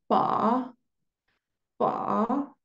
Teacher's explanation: el tono tres que es un tono que va y vuelve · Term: tono 3